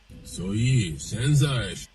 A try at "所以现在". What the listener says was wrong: So it's back to the English intonation. 所以 like so, now 现在 now, so now